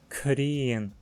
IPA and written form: kʰriːn (krien)